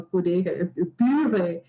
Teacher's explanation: na verdade a vogal que se usa é a intermediária